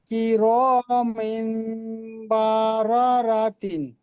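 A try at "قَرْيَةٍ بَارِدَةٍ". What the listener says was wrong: জি এখানে বাটা টান হয়ে যাচ্ছে, এটা হারাকাত টান হবে না।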